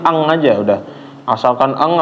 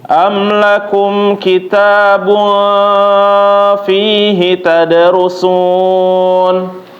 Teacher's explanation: dengungnya bapak-bapak ditunaikan dulu ya dengungnya itu dipanjangin dulu jadi jangan langsung pindah